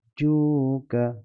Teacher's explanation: Ikut bacaan Syatibiyah kita baca 6 harakat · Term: mad lazim kalimi musaqqal